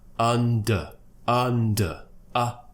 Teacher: for the up sound we're opening the mouth a little bit more and the tongue is curling slightly